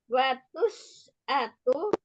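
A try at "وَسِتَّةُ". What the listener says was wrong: Watis atu kasroh taknya. Watis atu.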